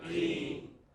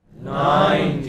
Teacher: In the first word 19, which part of the word is stressed? Teen.